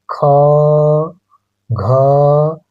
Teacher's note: दूसरा ख, घ, इन दोनों की अपेक्षा, इनकी और इनकी अपेक्षा इन दोनों का उच्चारण करने में हवा ज्यादा निकल रही है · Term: महाप्राण